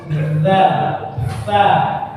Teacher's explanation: Nempelnya ujung lidah dengan gigi itu bersama kita bersuara, bukan ditempelkan baru menyuara. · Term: makhrajnya